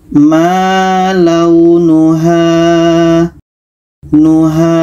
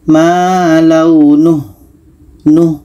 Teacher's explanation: tapi setelahnya tidak ada huruf yang dimatikan maka Bagaimana cara bacanya Ha ini dibaca panjang Karena ada Alif sebelumnya baris atas